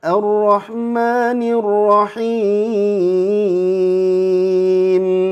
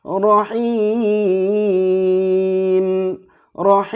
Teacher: Jadi mim sukun ini termasuk gunnah. Meskipun gunnahnya itu gunnah nakisah, gunnah yang tidak terlalu sempurna. Beda dengan mim bertasydid.